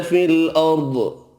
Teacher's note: ضاد حروف مستعلیہ پر پڑھا جائے گا